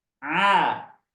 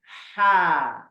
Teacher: Kalau ain itu tertekan suaranya, tertekan. Seperti orang dicekek. A. Kalau ha terbuka mulutnya. Ha. Udaranya bebas keluar.